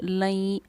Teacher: इस लई पर हम इख्फ़ा भी करेंगे और गुन्ना भी करेंगे। इसको हम इदगाम नाक़िस का क़ायदा कहते हैं या फिर यौमन का क़ायदा कहते हैं।